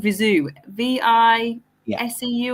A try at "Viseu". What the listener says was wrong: Viseu. It's more phonetically Viseu. You actually, when you pronounce Viseu, you don't expire through your nose. You do all through the mouth.